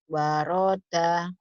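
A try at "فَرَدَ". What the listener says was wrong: Bukan wa, tapi fa. Faroda.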